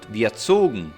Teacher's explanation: the voiced sound survived as it was transformed into a plosive /g/